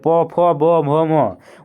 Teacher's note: आपका दोनों होष्ठ आपस में जो है ना चिपक जाएगा, मतलब सटेगा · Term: ओष्ठ